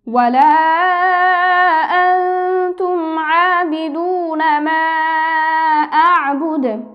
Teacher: ওয়াকফ করলে যেহেতু কলকলা হরফের উপর ওয়াকফ হয়েছে আমরা হরকতকে সাকিন করে কলকলা করে পড়ব।